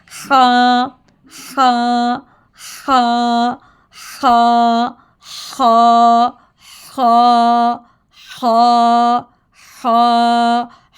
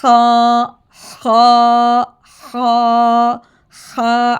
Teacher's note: तो आज हम पढ़ेंगे हा, जो कि हमने near side part of the throat से अदा करना है। इसको हमने गले के शुरू से अदनाए हलक से अदा करना, ठीक है। अदनाए हलक कहते हैं गले के शुरू वाला हिस्सा जो बिल्कुल मुंह के पास होता है, ठीक है।